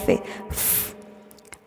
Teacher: labiodental, es cuando el labio inferior y los dientes superiores se tocan